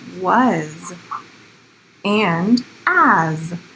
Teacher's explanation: some other words that end with an S that sounds more like a Z